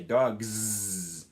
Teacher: So that's why in cats, it ends with a s sound because T is voiceless, so it's natural just to keep using the voiceless s sound. But in dogs, the g sound is voiced, so it's natural just to keep your voicing status going.